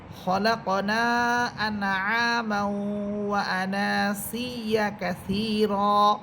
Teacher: এখানে ওয়া আনাসিয়া আনা শব্দে টেনে পড়তে হবে